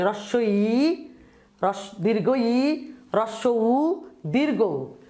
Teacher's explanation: তাইলে উচ্চ কাকে বলে? যেই স্বরধ্বনি উচ্চারণের সময় জিহ্বা উঁচুতে থাকে, তালুর দিকে থাকে, সেটাকেই বলা হচ্ছে উচ্চ স্বরধ্বনি।